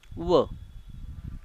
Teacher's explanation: दात आणि ओठ या दोघांचा उपयोग करून आपण फक्त एकच वर्ण उच्चारतो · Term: दंतोष्ट